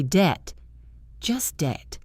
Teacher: D-E-B-T, debt. The B is completely silent. You say debt, just debt.